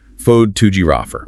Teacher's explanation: The stress shifts away from the first syllable and moves down the line to the second syllable, T-O-G. Fode to giraffer.